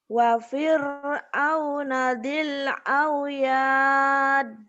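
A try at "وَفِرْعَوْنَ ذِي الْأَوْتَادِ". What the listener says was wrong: Titiknya di atas bukan di bawah. Bukan autad, bukan auyad ya.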